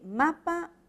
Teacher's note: la M es un fonema sonoro porque ha vibración de las cuerdas vocálicas En cambio cuando articulamos la p no vamos a efectuar ninguna